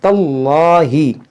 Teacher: اس میں جلال سے پہلے زبر ہے تو اس کو موٹا کریں گے